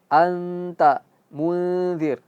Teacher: Sama juga seperti sebelumnya, nun mati bertemu dengan dza diam ikhfa dan harus ghunah dan masuk ke hidung